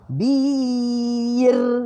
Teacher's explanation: Kita getarkan huruf ra tu sengih juga.